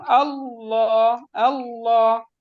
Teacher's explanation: وہ ڈائریکٹ مفخم ہو جاتا ہے، حمزہ مرقق جی کرے گی لیکن لام، اکثر لوگ میں نے دیکھے کہ اللہ سیکنڈ لام کو مفخم کرتے ہیں، جو کہ صحیح نہیں ہے۔ آپ حمزہ وصلیہ کو مرقق رکھیں گے لیکن لام کو مفخم